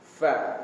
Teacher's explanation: Jangan pa. Jangan bibir bertemu bibir jadi pa. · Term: huruf fa